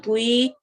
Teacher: تی نہیں پڑھنا، توئی، اور لمبا بھی کرنا ہے